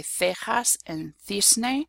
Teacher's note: I have a peninsular accent. So I, instead of saying an S sound in this case, will say a th, a TH sound